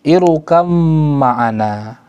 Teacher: Ra di sini ya harus tebal ya, bukan tipis. Kenapa? Ra berada di awal, sebelumnya ada hamzah, hamzatul wasl, maka bacanya bukan irkab, bukan tipis tapi tebal, irukab.